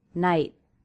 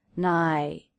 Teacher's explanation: The stop T makes the word more abrupt, night. And it doesn't have quite the downward shape in the voice, nigh, that it would have if I dropped the T altogether.